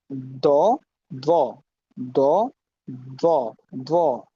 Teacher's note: দালের উচ্চারণ করবেন কিন্তু মুখটা গোল করে উপরে দাঁতের সাথে নিচের ঠোঁটের হালকা লাগবে।